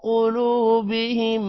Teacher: قوف موٹا ہوگا، لام کے بعد واو ہے لمبا کریں گے اور میم پر غنہ کریں گے